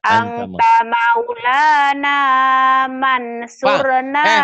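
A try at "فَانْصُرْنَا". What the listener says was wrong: Mansur Mak, Mansur ada tetangga saya Mansur bukan Mansur Fansurna Mansur mah penyanyi Mansur S itu. Ini Fansur, Fansurna.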